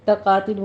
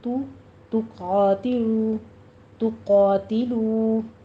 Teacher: تا باریک رکھنا ہے، ہونٹوں کو گول کیجیے، ضمہ ہے